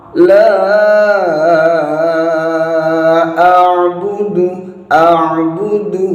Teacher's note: kalau kurang fokus bisa jadi bacanya la a'budu dengan mengganti ain dengan hamzah. Nah, ini kurang tepat.